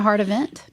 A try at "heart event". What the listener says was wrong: Heart, not hard.